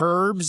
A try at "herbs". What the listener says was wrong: The H is silent in herbs.